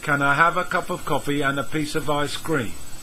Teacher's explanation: We link can to I, have to cup to of, and to piece to of. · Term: linked words